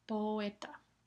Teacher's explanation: es una secuencia de dos vocales, pero dos vocales normales o verdaderas que se pronuncian en sílabas separadas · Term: yato